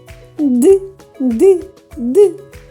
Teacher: коли ми вимовляємо звук д язичок піднімається до верхніх зубів горло працює